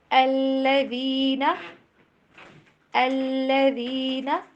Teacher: ذال کی آواز کو زا کی طرف نہیں پڑھنا